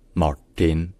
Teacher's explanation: le RT dans son prénom est prononcé en fait plutôt comme un T qui est rallongé qui est un peu plus retenu et qui surtout qui rétroflexe c'estàdire avec la pointe de la